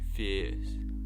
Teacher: many other vowel shifts including the monophthongization of ear, in words like fierce